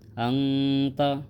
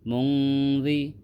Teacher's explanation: یہاں آواز کو ناک میں چھپا کر پڑھنا چاہیے۔ نوک زبان تالو سے ہٹا کر، جیسے اردو میں پنکھا کے نون کو پڑھتے ہیں، اخفا کی مقدار 1 الف ہے۔